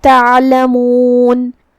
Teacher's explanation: کلمت تعلمون میں یہاں حرف العین ہے. ہم عین کو حلق کے درمیان والے حصے سے ادا کریں گے.